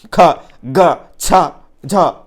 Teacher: వీటికి సంబంధించి పలకడానికి మనకు గాలి ఒత్తిడి అనేటువంటిది ఎక్కువగా అవసరం కాబట్టి ఒత్తి పలుకుతాం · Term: మహాప్రాణాలు